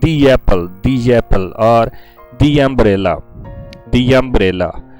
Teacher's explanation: before the next word why to start the next word and the pronunciation will add a y while pronouncing the next word